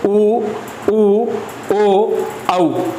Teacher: तो इनसे तात्पर्य कि जब अपन उच्चारण करते हैं तो वे कौन से स्वर वर्ण हैं जिनका उच्चारण अपन जब उच्चारित करते तो होठों की जो आकृति है जो वृत्त के समान होती है, लगभग, ऐसे नहीं है कि कंप्लीट होगी, लेकिन उनके समान लगती है, इसलिए इनको वृत्ताकार कहा जाता है।